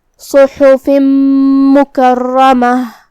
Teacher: कलिमत मुकर्रमह में रा पे तशदीद है, 2 हर्फ के बराबर हमें हर्फ रा को पढ़ना है। आखिर में यहाँ ता मुदव्वरा है, हम उस पर रुकेंगे तो उस पर जज़म से रुकेंगे, तो आखिर में हम हर्फ हा पढ़ेंगे।